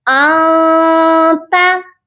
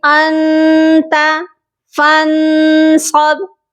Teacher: یہاں تو اخفا کرنا ہے، چھپانا ہے آواز کو. ہم نے اپنی زبان کو تالو سے بالکل بھی نہیں لگانا، بنا لگائے ہی آواز ناک میں جانی چاہیے